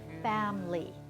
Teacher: Looks like there should be 3 syllables, but no one says family. We all say family, as if there were only 2 syllables. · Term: disappeared syllable